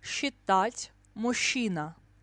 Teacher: СЧ, ЗЧ and ЖЧ we pronounce as ща, always.